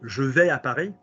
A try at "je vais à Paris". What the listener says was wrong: No, that was good, but then you started moving the mouth too much. Just say je vais à Paris. Remember, don't let anything sit here. Don't go.